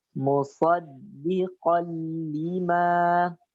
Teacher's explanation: Di sini terjadi idgham yang sempurna, idgham kamil. Jadi sifat huruf tanwin atau nunnya sudah nggak tersisa lagi. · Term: idgham bila gunnah